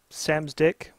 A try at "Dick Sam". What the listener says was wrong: said it wrong. It's actually Dick Sam. Yeah, you kind of reversed a little there, buddy.